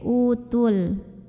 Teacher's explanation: Madnya ini gugur karena ada dua huruf sukun yang bertemu, yaitu waw mad, waw sukun sama huruf lam sukun ya. Maka kalau tidak berhenti, huruf sukun yang pertama yang waw lepas. Jadi tu-nya pendek, utul. Namanya takhalus bil hadzfi.